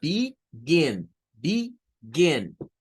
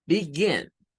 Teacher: Noten que ahí en la gen se sube el tono de voz.